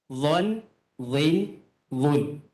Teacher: Sepatutnya dha, iaitu hujung lidah bertemu dengan gigi atas. Dha, dhi, dhu. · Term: huruf dha